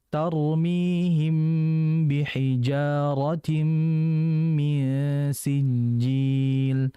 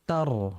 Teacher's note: tar ini kan ra-nya mati. Sebelumnya ada huruf ta berharokat fathah. Maka ra-nya menjadi tebal.